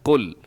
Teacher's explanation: قُلْ کو آپ نے موٹا کر دینا ہے، قُلْ، قاف کو موٹا کرنا ہے، لام باریک ہے، لام کو ہلنے بھی نہ دیجیے گا۔